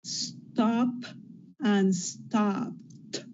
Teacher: That's P that has no vibration, then you get a T.